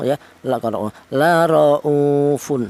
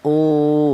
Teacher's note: Kemudian di sini ada u, yaitu ada wau mati yang dial huruf yang berharakat domah ini dibaca mad thaobi'i, yaitu panjangnya ada satu alif atau dua harakat atau dua ketukan